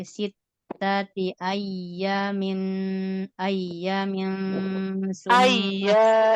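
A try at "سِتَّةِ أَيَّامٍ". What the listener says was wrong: Iya-nya panjang.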